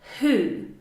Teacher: We actually can't hear the W. WHO? it's an H sound.